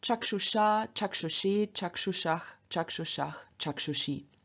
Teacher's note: In the instrumental dative, ablative, genitive, locative, we again have endings that begin with or are vowels, and in front of these vowels, us changes into ush through the Ruki rule